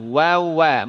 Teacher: Dari mana wa? Dari dua bibir dimonyongkan. Ya, wa, dhammus syafatain. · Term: Huruf waw